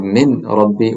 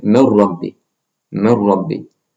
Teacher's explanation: Noon has sukoon on it, and then it's followed by a ra. So you drop the noon sound and merge it with the ra. So instead of min rabbi, we say mir rabbi. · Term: idgham